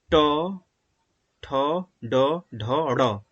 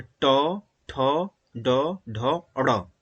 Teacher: ट वर्ग में ट, ठ, ड, ढ, ड़। इसमें मूर्धा मतलब जिह्वा को मोड़कर आवाज आती है, जैसे ट, ठ, ड, ढ, ड़।